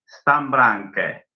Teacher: Nunca un croata va a decir Stan y luego Branque. Va a saltearse esa N. Va a dejar la lengua ahí en reposo.